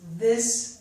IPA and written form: ðɪs (this)